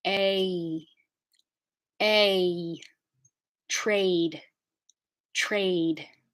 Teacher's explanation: the vowel and trade is a diphthong that starts on a and goes to e